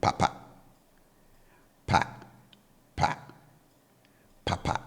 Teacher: high tone marker on both syllables now for the hand fan I bring the tone on both syllables down so low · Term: low tone